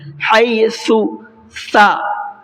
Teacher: حَيْثُ سا کا پروننسیشن سین سے اور شین سے بالکل الگ ہے، حَيْثُ سا، یہ دیکھیے زبان کی نوک کو سامنے والے اوپر کے 2 دانتوں کے ساتھ ٹچ رکھنا ہے